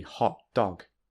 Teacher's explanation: you might stress the second word more to make it clear that you are not saying the compound noun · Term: noun phrase